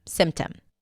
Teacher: Usually when the P appears between two consonants, especially if the first one is an M, it often drops. Like here, symptom.